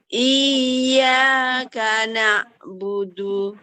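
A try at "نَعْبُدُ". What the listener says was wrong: Pecahin Bun. Nah, itu pecah. Na'budu. Ada pecahannya ya. Kalau kita pakai iyyaka na'budu berarti pakai hamzah Bun. Kalau hamzah nggak boleh pecah. Iyyaka na'budu. Ah, ini perbedaan hamzah dengan ain ya. Kalau hamzah dia tidak boleh dialirkan karena dia siddah ya. Dia tidak boleh dialirkan.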